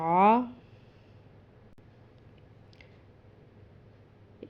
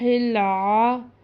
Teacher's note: عین وسط حلق یعنی آدھے یا درمیانی حلق سے پڑھا جاتا ہے، منہ سے ادا نہیں ہوتا